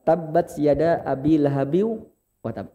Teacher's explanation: kalau besar, cara pengucapan yang tepat ditahan dulu baru dipantul.